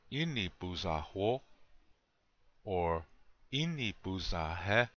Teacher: Goes up, then goes down, comes up tiny little bit at the end. Sometimes it doesn't come up, okay? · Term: vocal question mark